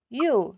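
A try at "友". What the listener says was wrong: Hindi siya you ha. Siya ay yo.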